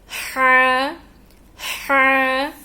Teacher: ہا کو حلق کے درمیانی حصے سے نکالا جاتا ہے. حلق کے درمیانی حصے سے ہا کو نکالا جاتا ہے. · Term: حروف حلقی